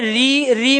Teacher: ऐसे ही हम प्रयोग करें री में भी देखो जीभ कहाँ लग रही है, तालू में। री आगे वाला भाग फंक्शन कर रहा है, बीच वाला पीछे वाला जीभ का कुछ नहीं एक्टिव हो रहा है